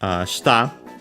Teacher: shita, accented on the last mora